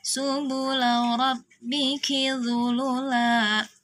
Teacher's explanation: Nah, ini hati-hati, suka ada yang membaca la-nya jadi panjang, ki-nya jadi panjang. Ini semuanya pendek karena di la dan di ki tidak ada tanda panjangnya.